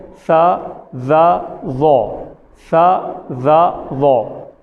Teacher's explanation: تو اس کی ادائیگی کیسے ہوتی ہے، اس کی ادا کرنے کا طریقہ کیا ہے، وہ آپ کو بتا دیتے ہیں کہ یہ تمام تینوں حروف جو ہم پڑھ رہے ہیں، جو آج کے سبق میں ہمارے 3 حروف ہیں ثا، ظ اور ظ، یہ تینوں حروف زبان کی نوک، سامنے والے جو 2 دانت ہیں ان دانتوں کی نوک سے لگتی ہے۔ تو ہم پڑھتے ہیں ثا ظ ظ، ثا ظ ظ۔